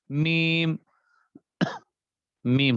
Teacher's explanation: میم، میم ہو رہا ہے نا ایسا، میم، با اور میم، تو یہ دونوں میں فرق ہو گیا کہ با کی ادائیگی تو ہونٹوں کے اندرونی حصے سے ہے یا تری والے حصے سے ہے، اور میم کی ادائیگی دونوں ہونٹوں کے خشکی والے حصے سے ہے